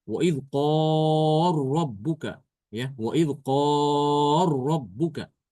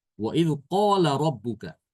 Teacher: Jadi lamnya tidak dibaca, lamnya hilang ya. Lamnya diidgamkan ke ro. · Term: idgham kabir